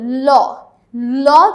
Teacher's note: ল যখন আমরা উচ্চারণ করি তখন আমরা জিহ্বাটা এমনভাবে ব্যবহার করি যে জিহ্বার দুই পাশ থেকে বাতাস বের হয়ে আসতে পারে। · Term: পার্ষিক ব্যঞ্জন